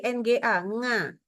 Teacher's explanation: membaca huruf ain, ini sengau. Keluarnya dari hidung.